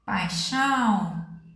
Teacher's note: o som vai sair nasal ó paixão totalmente nasalada